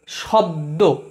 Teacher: কিন্তু ব আর দয়ের মাঝের অটা, অর্থাৎ বয়ের পরের অটা যেহেতু নাই, তাই এই দুটো জয়েন হয়ে শব্দ, বয়ের পরের অটা উঠে গেছে বলে সব হুট করে থেমে যাচ্ছে, তারপর আবার দ উচ্চারণ হচ্ছে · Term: হুট করে থেমে যাওয়া